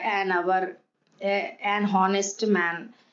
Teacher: the words hour, honest begin with a vowel sound as the initial consonant H is not pronounced